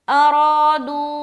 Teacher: तो इन अरादू, इन इन नून जाहिर हुई ना, इन अरादू, रा को मोटा रख रहे क्योंकि जबर है और खींचेंगे भी क्योंकि अलिफ मद्दा भी हो रहा है